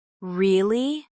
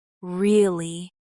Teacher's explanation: If you say it with a flat tone, really, it might show doubt or boredom. · If you say it with rising intonation, really? It shows surprise or interest.